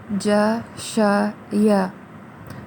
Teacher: یہ تینوں حروف زبان کے درمیانی حصے کو تالو کی طرف اٹھانے سے ادا ہوتے ہیں